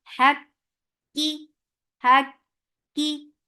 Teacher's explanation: For kasra, give e sound, and with kasra, the sound will be very short.